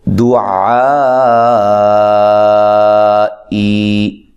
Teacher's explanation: ٹھیک ہے، حمزہ آ گیا ہے، لہذا اب ہم اس عین کو، الف مدہ کو 1 الف کی مقدار کے برابر نہیں بلکہ 3 سے 4 الف کے برابر لمبا کریں گے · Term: مد متصل